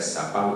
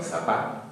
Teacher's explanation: no se pronuncia Zapal, sino Zapá, o sea, con ceceo y con caída de la R final